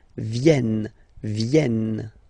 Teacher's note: classic ending ent for the third person of the plural is here, but phonetically it doesn't exist, so you don't pronounce it